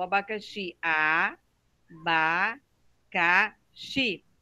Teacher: ela tem quatro sílabas e ela não tem acento porque a sílaba forte dela é o xi